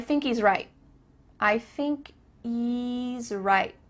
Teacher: Do you notice too at the end of the word right, there's no T sound?